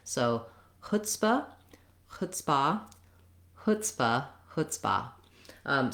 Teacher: So you can use a clear here, but it's going to be short and reduced because the stress in chutzpah is on the hut or chut syllable. So you don't want it to sound like chutzpah.